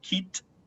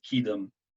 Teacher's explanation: it's kit with a T actually in pronunciation, but then here it is voiced kidum